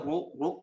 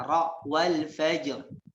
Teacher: Jadi ditebalkan suaranya dan lidahnya diangkat ke atas.